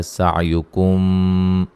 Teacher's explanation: سین کو باریک سیٹی سے ادا کریں گے